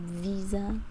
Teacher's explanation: when the S is stuck between two vowels, this is where you get the Z sound